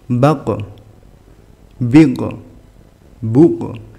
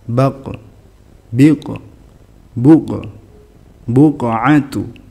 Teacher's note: karena huruf istilla jadi pantulannya juga tebal